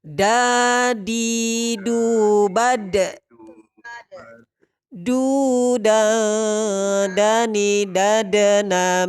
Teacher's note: huruf Dal ini sifatnya Qalqalah tempat keluarnya dari ujung lidah dengan pangkal gigi seri atas